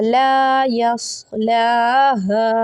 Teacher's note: یہاں ہے الف مدہ، خالی الف سے پہلے زبر 1 سیکنڈ کے لیے ایک الف کے برابر اس کو کھینچا جائے گا